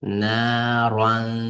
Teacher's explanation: Roh bu tafxim, ya'ni tom o'qiymiz.